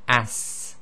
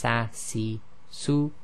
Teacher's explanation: the scene which is a bit like the English s okay there's a continuation of breath and this has what we call a whistling sound